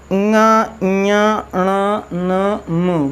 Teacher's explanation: और जैसे वर्ग के पंचमाक्षर हैं तो इनको क्या बोलते हैं, इनको बोलते हैं ङ ञ ण न म, मतलब नाक मुख के साथ साथ नाक का भी प्रयोग होता है